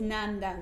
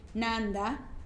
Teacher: a word like code is nanda with low tone whereas a word like hanging nanda with a rising tone at the end